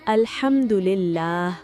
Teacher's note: यहां हा गले के दरमियान से अदा होता है।